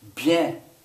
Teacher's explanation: that bien, that last letter, it kind of goes up in your nose